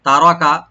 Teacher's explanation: তা ওপেন, রা open, রাটাকে deep করে পড়তে হবে, কাপ ওপেন করে পড়বেন, কিন্তু এখানে টান হবে না।